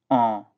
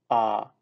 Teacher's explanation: a nasal marking which means you need to pronounce the sound through your nose